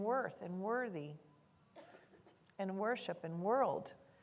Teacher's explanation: when that o r follows the w then it says ER like in worth and worthy and worship and world